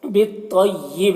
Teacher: بالطیب با کو تو سے ملا کر تو کو پر پڑھیں گے. بالطیب یہاں پر وقف کریں گے تو با میں قلقلہ ہوگا.